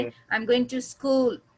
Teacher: rising जहाँ पे आपका पिच हाई होता है, जैसे आई एम गोइंग टू स्कूल, तो स्कूल पे जो है ना ये राइजिंग टोन आ गया